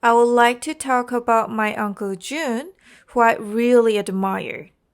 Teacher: falling tone at the end because it's a statement